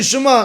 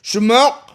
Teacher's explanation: Ashkenazim say Shema, that's it, finished. There's no ayin, there's nothing, right?